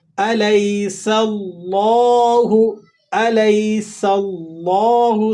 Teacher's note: سین کو سیٹی کے ساتھ ادا کرنا ہے اور لفظ اللہ کو آپ نے موٹا پڑھنا ہے۔